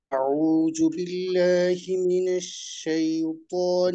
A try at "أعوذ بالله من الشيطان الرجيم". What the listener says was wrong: আপনার জালের উচ্চারণটা একটু কেমন যেন মনে হয়, আউজু, এটা জু এর মতো মনে হয়, জু এমনটা মনে হয়, রু।